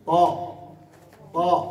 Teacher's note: فالآن هذه المنطقة كأنه الخرطوم تمسكه من هذه المنطقة، لما ترجع اللي هي منطقة أقصى اللسان، لما ترجع كأنها تتحكم في الصوت، فيصبح الصوت يصعد إلى الأعلى، فإذا صعد إلى أعلى يصبح يرن في قبة الحنك. هذا هو التفخيم.